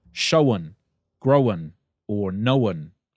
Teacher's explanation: New Zealanders put an extra schwa vowel into the sound, so it sounds like showen, growen, or knowen.